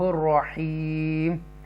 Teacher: رحیم کر کے پڑھیں گے ہم را کو تفخیم کے ساتھ، را کیونکہ را سے پہلے پیش ہے